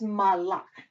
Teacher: you do put the emphasis on the second syllable. And this is the verb.